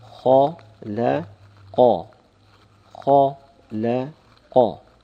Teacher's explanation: The kha is full mouth, whilst the lam is empty mouth. And the qaf again is full mouth.